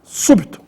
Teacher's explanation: a sílaba tônica é a antepenúltima, su, e também recebe acento agudo no U, súbito.